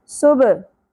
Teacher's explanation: सुबह, सीन सीटी के साथ और बा साकिन पे कलकला होगा। बा को अपने मखरज से हिलाना है, यानी सुब नहीं पढ़ना, सुबह इस तरह पढ़ना है। · हा वस्ते हलक से खड़ी ज़बर एक अलिफ के बराबर खींचना है